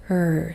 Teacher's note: the E is kind of Silent you're only hearing that R sound